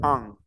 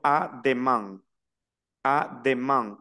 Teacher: una a y una n pero nasal